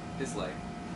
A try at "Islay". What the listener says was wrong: Isla. Isla. The S is silent. So is the Y. Isla.